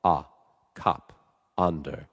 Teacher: That sound is is a really rich dark sound in the middle of the mouth. The jaw is dropped, the tongue is down.